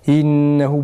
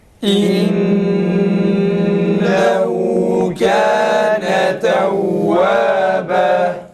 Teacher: hemze boğazın kapanıp açılmasıyla i sesinin çıkması gerekir